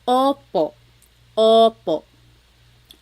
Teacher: Sometimes I think of it like having a ball in your mouth. Your tongue gets kind of pushed back and down a little bit, and the inside of your mouth is open and wide.